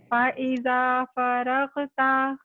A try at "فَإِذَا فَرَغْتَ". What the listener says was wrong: غین کو تھوڑا ہیوی کرنے کی کوشش کریں. آئی نو اٹس ڈیفیکلٹ, بٹ ایک تو وہ تھروٹ سے نکل رہا ہے اور بیک پارٹ بھی ریز. فَرْغَب.